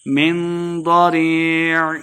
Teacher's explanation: ضاد کو موٹا پڑھنا ہے، آخر پہ عین کی آواز آئے گی، وقف کریں گے.